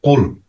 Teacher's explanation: যেমন কুল, কুল কাফটা আসবে একদম গলার শুরু, যত শেষ এবং জিহ্বার শুরু থেকে। জিহ্বার গলা যেখানে মিলিত হয়েছে ওইখান থেকে একদম শেষ জায়গা থেকে কুল। হ্যাঁ, ডিপ থেকে, মানে জিহ্বার ডিপ থেকে কুল শব্দটা উচ্চারিত হবে।